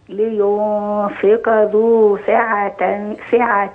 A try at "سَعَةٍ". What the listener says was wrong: لا يا أمي. أيوة. السين مفتوحة. ساعة ساعة ساعة ساعة